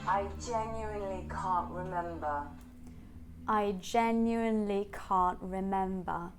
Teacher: in terms of intonation we start a bit lower on I because it sounds stressed and then we jump up on genuinely